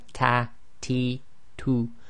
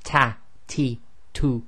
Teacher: the hams or the aspiration is slightly softer um than in the English due to the positioning of the tongue · said by putting the tip of the tongue where the gums meet the teeth, and this gives a slightly softer sound than in English